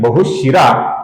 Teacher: यहां पर विसर्ग है। किंतु आगे विसर्ग के आगे मृदु व्यंजन है ब। इसकी वजह से इस विसर्ग का लोप होता है दोस्तों। मतलब विसर्ग अदृश्य हो जाता है। इसका उच्चारण हम नहीं करते।